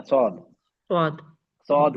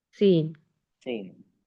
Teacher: जबान की जड़ को उठाओ, हमने उठा दी तो हैवी हो गया, सौद बन गया, नहीं उठाया तो लाइट हो गया, सीन हो गया